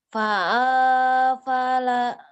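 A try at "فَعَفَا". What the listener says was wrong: Ujungnya doang yang panjang ya. Lagi.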